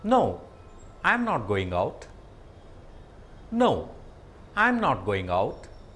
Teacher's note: intonation falling tone this falling tone is used for a statement towards the end of the sentence the tone reaches a lower level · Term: falling intonation